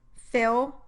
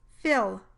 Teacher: The dark L is similar to the w glide in both its articulation and in the way it sounds. Listen as I say the word fill, first with the dark L, then with the light L.